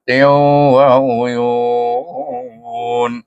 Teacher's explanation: Dia bukan huruf dengung tapi didengungkan pada waw. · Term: idgham ma'al gunnah